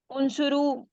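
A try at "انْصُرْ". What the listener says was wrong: उनसुर, हाँ उनसुरु नहीं है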